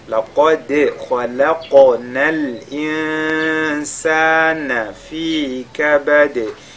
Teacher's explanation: la lettre qaf avec al-tafkhim, le dal avec al-qalqala, le kha avec al-tafkhim, le qaf avec al-qalqala, al-insan, nous sakin suivi de sin, al-ikhfa, et puis fi kabad, on termine par al-qalqala.